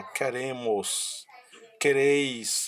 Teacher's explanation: são verbos que apresentam a sílaba tônica nas terminações das conjugações do verbo · Você tem um tempo maior de pronúncia no final, a sílaba tônica na conjugação do verbo e não no radical.